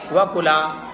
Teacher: وکلا میں حروف مدہ کا الف آ رہا ہے، اس لیے تھوڑا سا کھینچ کر پڑھا جائے گا